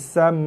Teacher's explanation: Tekan aja pada mim. Berserta dengung. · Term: mim sabdu dengung